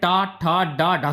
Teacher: यह मुर्दा से बोले जाते हैं